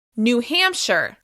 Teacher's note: The stress is on the first syllable of the second word. · The first word will be unstressed. It will still be easy to understand, but it won't be emphasized.